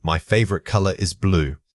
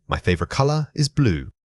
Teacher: When you are giving a simple statement, your voice should generally fall at the end. If it rises even slightly, it can sound like you are asking for confirmation. Practice making a definitive downward drop on that last word to sound more confident. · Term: Rising intonation